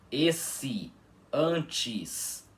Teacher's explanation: Quando o E fica fraco em português, no final, né, em sílabas átonas finais, ele fica com som de I. Vocês podem perceber que quando pronunciamos palavras como esse, antes, o E fica com som de I, não é mesmo?